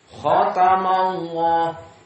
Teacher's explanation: Khatamallah, maka di sini dalam keadaan mufakhamah karena fathah sebelumnya.